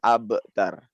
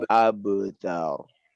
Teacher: Abtar ini masuk kepada kolkolah yang sugro ya. Jadi bacanya abtar. Jangan mentok ke hamzah.